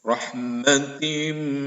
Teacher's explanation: memasukkan bunyi tanwin ke dalam huruf mim disertai dengung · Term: idgham bigunna